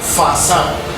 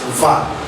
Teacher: The major difference is just that the fa sound, the first one, is voiceless, while this one, va sound, is voiced